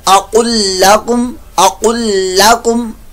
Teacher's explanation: یہ قاف جو ہے پر موٹا پڑھتے ہوئے اس کو لام سے ملا دینا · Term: ادغام